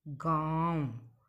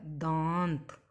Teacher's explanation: यहाँ आकर हमारा मुंह और नाक से ध्वनि आ रही है, इसलिए यह अनुनासिक स्वर का शब्द हो गया। इस तरह से दांत, दांत का हम वर्ण विच्छेद करेंगे, द आ त अ, दांत।